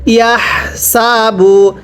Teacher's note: এই হাগুলো উচ্চারণ করার সময় গলার মধ্যে বাতাস বের করে পড়তে হবে। পড়ুন ইয়া হা জবর ইয়াহ, সিন জবর সা, বা পেশ বু, ইয়াহ সাবু।